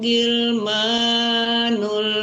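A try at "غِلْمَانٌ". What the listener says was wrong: Ya, membaca ghain ya, jangan gil ya, jangan gil itu jangan disamakan dengan huruf G ya, tapi ghil, agak tebal huruf ghain itu. Ghil.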